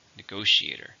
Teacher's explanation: How many syllables in negotiator? 5. Stress on the second.